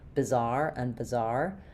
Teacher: So, both have second syllable stress, bizarre and bizarre. However, because the i and the uh are so similar when they're unstressed, they're both reduced vowels, bizarre and bizarre, it's almost inaudible to hear the difference.